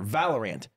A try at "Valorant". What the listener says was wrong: You're saying rant. Ant. He's saying int.